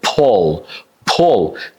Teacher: The last L is a dark L.